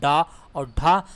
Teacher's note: डा और ढा जब हम लोग उच्चारण करेंगे, डा और ढा, तो हमारा जो जीभ है ऊपर का तालु में जाके टच होता है। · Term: मूर्धा ध्वनि